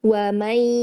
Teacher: Ya, wa may ya, idgham bil gunnahnya wa may agak sedikit setengah sengau ya. Coba lagi wa may, lamakan lagi tempo gunnahnya.